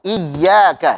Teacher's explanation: Jadi ditekan tapi sambil dialirkan suaranya karena punya sifat rakhawah.